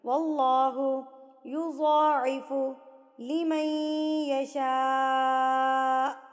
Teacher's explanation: اللہ سے پہلے زبر آ گیا تو یہاں پر اب ہم اللہ کو موٹا پڑھیں گے